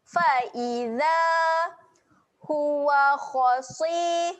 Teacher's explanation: huruf kha tebal, huruf sad tebal juga. Dua-dua huruf ni kena muncungkan mulut.